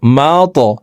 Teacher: কলকলার হরফ উপরের দিকে ধাবিত করে ধাক্কা দিয়ে উচ্চারণ করব